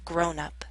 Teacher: Stress is at the beginning.